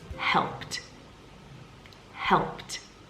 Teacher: we must be careful not to pronounce that extra e d as an extra syllable